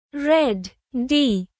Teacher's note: Your tongue taps the roof of your mouth for a soft D sound.